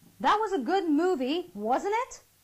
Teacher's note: my rising voice indicates that I'm really eager to get her to say yes to what I am asking her through my question · my wasn't it kind of, just goes a little higher, and that is what my rising intonation is all about